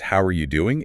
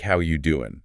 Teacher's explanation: You notice that it is not pronounced how are you doing? It's more like how you doing? >> Right? It's all run together. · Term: connected speech